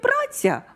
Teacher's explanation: у слові «праця» у нас наголос падає на «а»